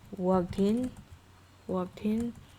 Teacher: And another one is like walked in at the time, worked and in. So the final consonant joining the next word's vowel. So this is what we call catenation or linking.